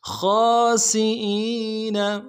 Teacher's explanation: سین کی سیٹی باریک ہوگی